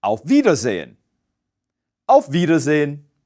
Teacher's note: Note that Wiedersehen is spelled with a W. But like all German words spelled with a W, it's pronounced as a V.